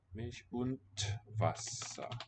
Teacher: the end of a word is not going to sound as a D, but becomes voiceless T